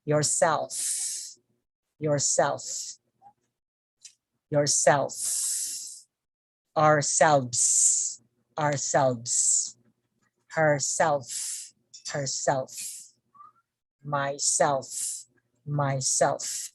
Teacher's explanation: intensive reflexive pronouns which receive a stronger stress on the second syllable